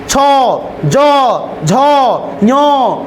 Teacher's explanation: अभी जो देख रहे हैं ना, ये दीर्घी, दीर्घी तालु में सट रहा है, चौ, चौ, देखो जीभ उच्चारण करके देखो, चौ सट रहा है, छ, ज, झ, ञ, सो, ये सब तालु से उच्चारण है